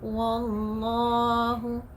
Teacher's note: The heaviness, the tafkhim of your word Allah begins from the sabdu.